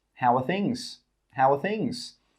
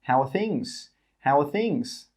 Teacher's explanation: It's like there's a W that comes between the 'how' and the 'are'.